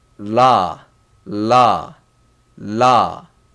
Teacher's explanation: Korean, we don't have R sound, so it's all L sound. There is no R sound, so it's la, la, la.